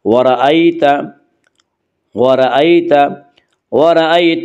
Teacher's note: یالین کو نرم آواز کے ساتھ جلدی پڑھیں گے